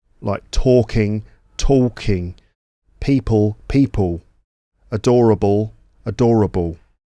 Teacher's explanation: the L at the end of certain words or before another consonant ends up being vocalized as a W instead of a L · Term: dark L